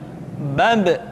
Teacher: Ketika mati, maka terdengar suara pantulan.